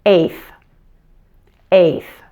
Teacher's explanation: You can also pronounce this word with the final T being silent, if that's easier for you.